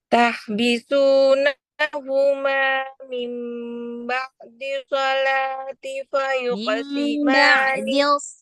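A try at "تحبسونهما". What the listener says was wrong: Khotnya tasdid.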